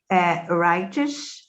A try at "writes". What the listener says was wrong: Writes, not writers, writes. He writes. Say he writes.